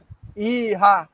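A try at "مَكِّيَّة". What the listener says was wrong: কি হা না ইয়া, ওই হা। আচ্ছা দেখেন সূরাতুন নাস মাক্কিয়া সূরাতুন দেখেন সহজ ম্যাক। বলেন বলেন মিম কাপ জবর মাক। হ্যাঁ, কাফিয়া জের কি। মাক্কি মাক্কি একটু ধাক্কা দেয়।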